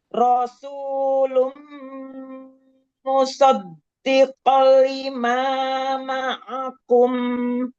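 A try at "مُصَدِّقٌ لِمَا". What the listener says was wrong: Ku bukan ko. Musaddiqul lima.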